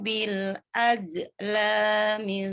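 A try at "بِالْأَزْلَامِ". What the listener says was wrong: Oke, masih simu masih panjangnya 1, harusnya 2. Bil azlami masih bil az. Ada j-nya itu, ada mantulnya namanya tawalud itu. Az. az.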